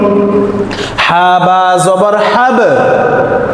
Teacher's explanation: বা কিন্তু কলকলা হরফ, একটু প্রতিধ্বনি আওয়াজ দিয়ে পড়তে হবে